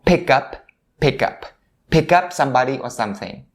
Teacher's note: for the word up, all you have to do is to stop the P sound right there · the word pick and up are standing next to each other. So it's a very convenient situation for you to make a linking here.